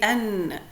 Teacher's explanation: part of the sound comes out of the mouth all right part of the sound comes out from the mouth and the other part comes out from the nasal cavity